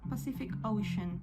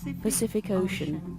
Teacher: Todas las Cs suenan diferente. La primera suena como S, la segunda suena como K y la última suena como SH.